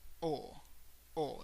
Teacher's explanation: notice that it's not like the English o oh no when you say oh in English you add like this little u sound at the end oh oh we don't want that in Spanish we don't want